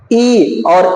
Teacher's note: ई और ई को तालव्य स्वर कहते हैं। जब तालु से उच्चारण होगा ई और ई, तो उसको तालव्य स्वर कहेंगे